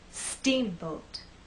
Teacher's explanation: I want the first part to be loud and the second part to be softer